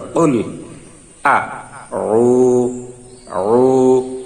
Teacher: আইনের মাকরাজ হলকের মধ্যখান, এটি একটু কঠিন উচ্চারণ, তাই এই উচ্চারণটি একটু বেশি বেশি করবেন এবং যাতে মাকরাজটি অর্থাৎ আইনের উচ্চারণটি সঠিক হয়।